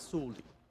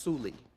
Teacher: pronounce it in everyday speech it just comes out as solji so the O is so quiet that you basically don't hear it